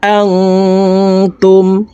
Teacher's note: নুন সাকিনের পরে ইকফার হরফ তা আছে এই কারণে এই নুন সাকিনকে নাকের ভিতরে লুকাইয়া গুন্নার সহিত পড়তে হবে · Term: ইকফা গুন্না